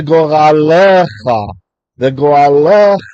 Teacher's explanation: What's happening is, if you're just listening, there's the etnachta, the wishbone looking thing there. So he's lengthening what would have been a silent schwa and making it a short segol